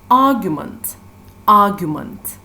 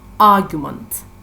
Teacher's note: So the stressed syllable is the first syllable